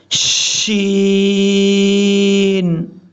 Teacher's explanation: شین کو پڑھتے ہوئے آواز پھیلے گی